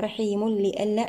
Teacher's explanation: التنوين مع حرف اللام، هنا إدغام بغير غنة كامل